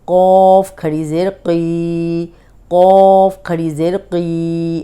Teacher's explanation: اب قوف موٹا ہے، زیر کے ساتھ بھی موٹا ہی پڑا جائے گا